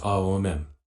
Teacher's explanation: In Sanskrit, O is a diphthong formed by combining the sounds A and U.